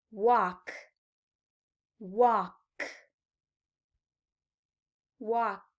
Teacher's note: The present tense walk, walk, walk, ends in an unvoiced k.